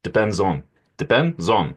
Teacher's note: So the z goes to the o, right? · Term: catenation